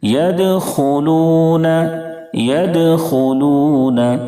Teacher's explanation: دال میں قلقلہ ہوگا یعنی آواز لوٹ جائے گی کیونکہ دال حروف قلقلہ کے 5 حرفوں میں سے ہے.